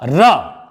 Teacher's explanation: जिस वर्ण के उच्चारण में हमारी जिह्वा लुढ़क करके नीचे की दिशा में आती है, वह वर्ण हमारा लुंठित वर्ण कहलाता है। वो केवल एक है, वो है आपका र।